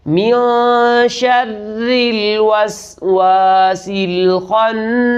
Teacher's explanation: خا موٹے حروف میں سے ہے اس لیے اس کو موٹا ادا کرنا ہے